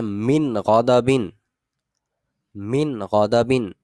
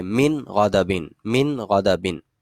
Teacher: یہاں پر نون کے اوپر کسی بھی قسم کا کوئی غنہ نہیں کیا جا رہا، فقط اظہار کریں گے، من غضبن.